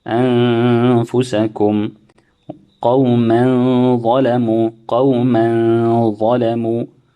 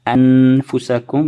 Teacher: you will hide the sound of the noon or the pronouncing the noon. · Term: ikhfa